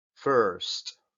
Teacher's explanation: Es una especie de E, pero súper cerrada